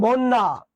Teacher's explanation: 2 বার। এবং শব্দের মাঝে বা শেষে জ ফলা থাকলে সেটা উচ্চারণ হবে না, যার সঙ্গে থাকবে 2 বার উচ্চারণ করবে। সংযুক্ত ব্যঞ্জনে যদি জ ফলা থাকে তার পূর্বের অধ্বনি পরিবর্তন হয় না। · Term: দ্বিত্ব